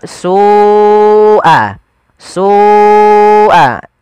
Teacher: Kemudian melafal su'al azab, Ada lafal su, ada mad wajib muttasil, yaitu lafal su wajib kita panjangkan sepanjang 4 atau 5 harokat